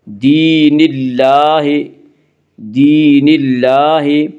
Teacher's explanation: اللہ کے لام سے پہلے نون کے نیچے زیر ہے اس لیے اللہ کا لام باریک پڑا جائے گا · اللہ کے اوپر کھڑا زبر ہے، کھڑا زبر کو ایک الف کے برابر کھینچ کر پڑھیں گی